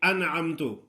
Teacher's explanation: نون پر غنہ نہیں کرنا